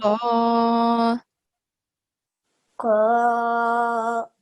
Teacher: we are raising the back end of the tongue. Okay? And we have to touch the roof of the mouth. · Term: qaf